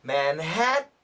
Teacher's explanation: make the T and your tongue is on top stuck to the top of the mouth